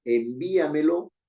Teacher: tiene la mayor fuerza de voz en bi